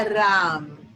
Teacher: Então, na verdade, o que vai fazer esse som ficar um pouco mais fechado, e foi ótimo que você percebeu, significa que seu ouvido está afinado, é a nasalização. Então, como o M traz uma nasalização, a nasalização tende a fechar um pouco mais o som